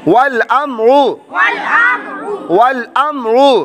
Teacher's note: میم ساکن کے بعد حرف با اور میم کے علاوہ را آنے کی وجہ سے اظہار شفوی بغیر گننے کے